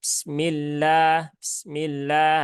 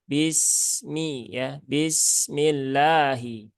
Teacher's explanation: Kalau membaca basmalah, ya, sinnya tunaikan dulu sifat rokhawahnya. Jangan bismillah, tapi bismi ya.